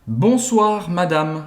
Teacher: esse e no final ele é tão discreto que a gente quase não escuta